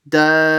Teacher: See, I paused for half a second before I said the ba.